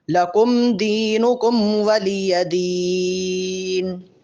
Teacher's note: ان دونوں میم پر غنہ نہیں ہے. لکم دینکم ولی دین، لکم دینکم ولی دین.